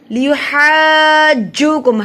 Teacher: ہا کو لمبا کیا جا رہا ہے کیونکہ اس پہ بڑی مد ہے, تین الف کے برابر لمبا کیا جائے گا. لیحاجوکم ہا کو ہم جیم سے بھی ملا رہے ہیں کیونکہ جیم کے اوپر شد ہے.